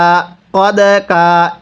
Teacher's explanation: কফ দাল জবর কদ কাফ আলিফ জবর কা কদা কা। এই দালের মধ্যে আমরা ধাক্কা দিয়ে পড়ব। কারণ দালটি হলো কলকলার হরফ। দালে যদি সাকিন হয় কলকলা করে পড়তে হয়।